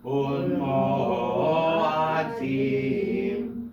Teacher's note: the only reason you stop is because the ayin is a glottal stop